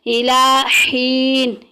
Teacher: یہاں پہ دیکھیں تنوین کے بعد حمزہ آ گئی ہے تو اظہار کا قاعدہ جاری ہو رہا ہے، وَمَتَاعٌ اِلَى کھڑی زبر ایک الف کے برابر لمبا کریں گے